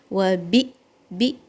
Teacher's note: This hamza, when it has a sukoon, then you cut the sound and you cut the air as well.